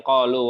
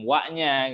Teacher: Qalu makhrajnya al-jauf, kemudian wa ya makhrajnya di syafatan.